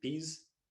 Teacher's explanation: In Indian English, in our study, words like peas often produced without aspiration